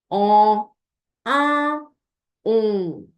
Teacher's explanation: do not pronounce the N or the M as a separate consonant at the end of the nasal sound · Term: nasal quality